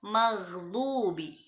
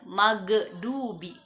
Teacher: Orang membacanya seperti huruf G, itu kurang tepat. Maka bacanya dari tenggorokan bagian atas · huruf gha itu adalah huruf tenggorokan dan dia bukan huruf qalqalah. Bacanya maghdubi, jangan magdubi.